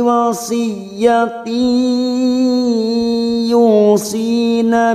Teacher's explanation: Siap masuk ke huruf ya dan ditahan selama 3 harokat. Wasiyati ditahan selama 3 harokat masuk dan mendengung masuk ke huruf ya idgham bigunnah. Yu duma bertemu sukun matobi'i 2 harokat.